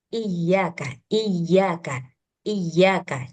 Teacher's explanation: tasydidnya ini harus sedikit ditekan ya. Untuk menunjukkan bahwa sia ini dia bertasydid. Jangan iyakah.